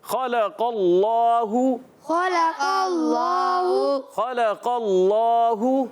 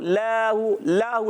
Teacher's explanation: اللہ پاک کے لام سے پہلے زبر آ رہا ہے، اس لیے اللہ پاک کا لام بھی ہم موٹا کر کے ادا کریں گے